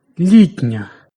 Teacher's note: М'який «ні» впливає на попередній «ти» і той пом'якшується.